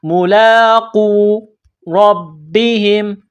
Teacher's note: لام کڑا زبر لا، ایک الف کی لمٹ میں کھینچنا ہے، قاف کو واو کے ساتھ پلس کرنا ہے، قاف کو موٹا کرنا ہے ، ملاقو ربہم، را کو با کے ساتھ پلس کرنا ہے،